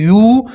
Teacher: یا کے ساتھ واو مدہ ہے تو واو مدہ میں آپ حضرات ایک الف کے برابر کھینچیں گے